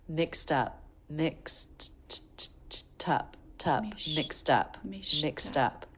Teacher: the ED ending is pronounced as a T because the sound before was unvoiced. Mixed up. KS, mix, mixed up.